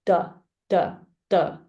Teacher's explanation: And for D, your tongue is straight up, maybe 45-degree, and the tip touches the upper teeth, between your upper teeth and the gum, the hard palate right here.